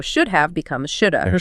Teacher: The vowel in have reduces to uh and the v sound often disappears completely.